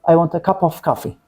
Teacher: So I say want, strong, cup, strong, and coffee, strong. They are stressed. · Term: sentence stress